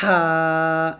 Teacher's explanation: আমাদের গলার মধ্যখান থেকে উচ্চারণ করতে হবে গলার মধ্যখান থেকে চাপ দিয়ে চিকন করে উচ্চারণ করতে হবে